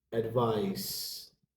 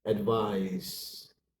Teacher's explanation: Advise, a verb, to give a suggestion. Advice has a S ending sound. Advise has a Z ending sound.